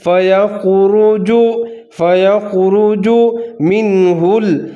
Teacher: خا کو اور را دونوں کو ظاہر کر کے پر کر کے پڑھنا ہے